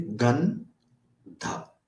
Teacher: In this word, gandha, even though ga is short, it has to be considered as long because it is followed by the conjunct consonant dha.